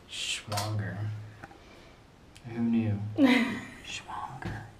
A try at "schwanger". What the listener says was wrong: You're saying it wrong. The W's are pronounced like V's.